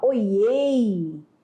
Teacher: o LH não foi pronunciado